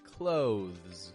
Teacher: getting the TH, very softly, before a brief and fading Z sound